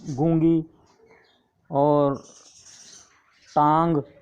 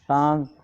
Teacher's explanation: لیکن آدھا نون پڑھا جا رہا ہے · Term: نون غنہ